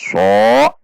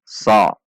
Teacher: Bukan dengan membulatkan bibir, tidak dengan dibaca so, namun dibaca sa. Sa, hanya menaikkan pangkal lidah.